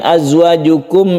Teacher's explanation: Dia itu bersifat shafir yang berdesir. Azwajukum, azwajukum, jadi tidak memantul karena dia bukan qalqalah.